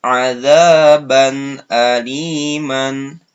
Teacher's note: Begitu juga dengan tanwin fathah atau fathatain bertemu dengan hamzah. Nah, tanwinnya dibaca jelas.